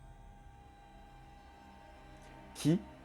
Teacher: le son K, avec une aspiration